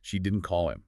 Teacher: And stressing call, the source suggests, implies she texted him instead or emailed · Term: Stress on call